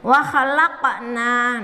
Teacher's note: Nah, huruf qafnya dipantulkan. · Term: Qalqalah huruf qaf